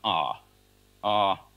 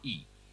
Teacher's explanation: when the tongue is in the back there's a constriction in the back you get the sound ah ah when the constriction is at the front high you get sound e